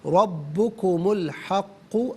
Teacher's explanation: फ़ज़ालिकुमुल्लाहु रब्बुकुम अल हक़्क़ु, रा पर ज़बर है, रा को पुर करके पढ़ेंगे, कुम में मीम पर पेश, इसे अल हक़्क़ु की लाम साकिन के साथ मिलाएंगे